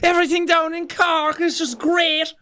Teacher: everyone here speaks a few octaves higher than the rest of the country, boy. It's a little bit forlorn and a little bit melodic.